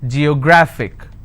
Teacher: I need to stress on the second last syllable. So I'll pronounce this as geographic.